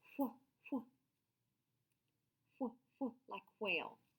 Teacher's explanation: But WH has a little puff of air, and it says wh, wh, wh, wh, like whale.